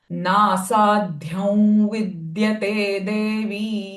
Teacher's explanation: Anuswara sound will be v because following sound is v.